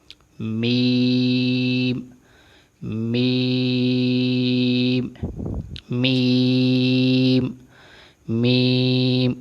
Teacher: میم کا مخرج دونوں ہونٹوں کی بیرونی تری آپس میں ملانے سے یہ ادا ہوتا ہے